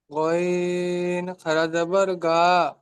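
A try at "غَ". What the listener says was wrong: গা নয়, গইন খাড়া যাবার গ, গা নয়, গ।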